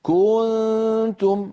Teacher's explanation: يعني بعض إخواننا الله يهديهم بيقولوا مثلا كنتم خير أمة فهذا الضغط الزائد والتطويل الزائد لزمن ضمة الكاف يؤدي إلى توليد واو